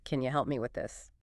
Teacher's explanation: can you, often reduces to the weaker form, can ya.